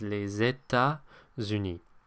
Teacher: that second T in État is silent. It is not les États-Unis, which I hear a lot.